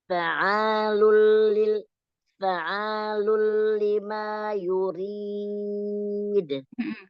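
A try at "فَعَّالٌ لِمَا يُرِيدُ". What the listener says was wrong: Ada tasydid, ditekan huruf ain. Sedikit lama ya, dilamain. Fa'alu. Fa'alul lima yurid. Kurang ditekan huruf ain. Berfa'a. Fa'alu. Fa'alu.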